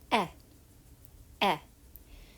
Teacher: this is a lax vowel it's more relaxed your face is not tense the sound is a little bit shorter